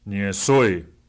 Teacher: Notice that ye is low because ni is low and so, house, is high.